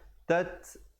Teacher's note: ada hamas di situ, bunyi angin